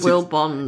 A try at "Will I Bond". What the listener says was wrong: it's will I Bond like there's an i in the middle